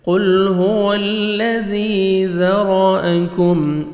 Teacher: ذال کو باریک پڑھنا ہے آپ نے، نرمی سے ادا کرنا ہے